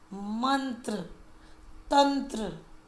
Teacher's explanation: अनुस्वार के बाद त आया है और त वर्ग का पंचम अक्षर है न, इसीलिए न के उच्चारण के लिए कार्य कर रहा है। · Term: न की आवाज